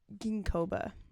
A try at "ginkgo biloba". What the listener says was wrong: No, it's called ginkgo biloba. Ginkgo biloba. No, it's 2 words. Ginkgo biloba.